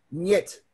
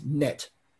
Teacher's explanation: Нет is palatalized. There's a soft sign in there, which makes the n, nye. Without the soft sign, without the soft sign, it's net. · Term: palatalization